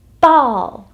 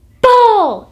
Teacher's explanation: them what you want them to do so i'm going to close my lips and make that bu sound with my lips keeping them nice and tight showing them that plosive that explosive sound